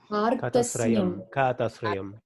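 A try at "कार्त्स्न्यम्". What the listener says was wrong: It is not Kath. Kath is wrong. What is the first letter? What is the letter following the letter Ka? It is not Takara. Karsnyam. You have to see that what are the letters involved in this. Kakara plus A plus, and after that, whatever letter you know already, it is there. Repa plus Takara plus, these are the letters.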